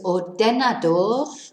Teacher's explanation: our stress is on the penultimate syllable, the A.